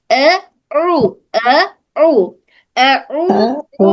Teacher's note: او عین وہ حلق کے درمیانی حصے سے ادا ہوتا ہے ، او او او میں تھوڑا سا کھینچ کے پڑھیں گے